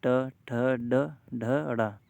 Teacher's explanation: तो तालू से जीव टच होगी इसी तरह से देखते हैं ट वर्ग में मूर्धा उच्चा स्थान है इसका